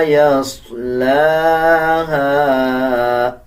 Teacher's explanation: صاد کو پر پڑھا جائے گا، لام کے اوپر کھڑا زبر ہے، 1 سیکنڈ لمبا کریں گے. ہا کے بعد الف ہے اور الف کے اوپر چھوٹا مد ہے، 3 سیکنڈ لمبا کریں گے